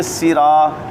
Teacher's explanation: سین میں سیٹی تو ہے لیکن یہ پر نہیں ہے